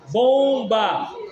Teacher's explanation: o M tá nasalizando o som do O.